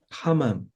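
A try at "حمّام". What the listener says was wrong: hammam. Mimnya bertasydid ya. Hammam.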